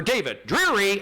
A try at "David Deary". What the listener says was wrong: Cheery. No R. Theory.